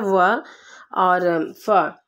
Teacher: और दंतोष्ठ हमारे होते हैं व और फ।